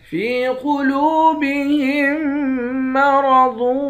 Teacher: ہا کو میم مشدد کے ساتھ ملا کر یہاں ادغام مع الغنہ کر کے پڑھیں گے۔ را اور ضاد ان دونوں حرف کو موٹا پڑھیں گے۔ ضاد کو واو کے ساتھ ملا کر یہاں بھی ادغام مع الغنہ کریں گے۔